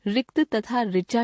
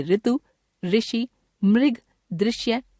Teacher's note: हिंदी भाषा भाषी इसका उच्चारण व्यंजन र जमा स्वर ई री के रूप में करने लगे हैं। इस तरह हिंदी में रिक्त तथा ऋचा शब्दों की पहली ध्वनि के उच्चारण में कोई अंतर नहीं रह गया है